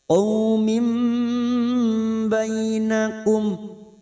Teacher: Bertemunya nun sukun atau tanwin yang bertemu dengan huruf ba namanya bacaan iqlab. Qaumim bainakum kita dengungkan selama 2 atau 3 harokat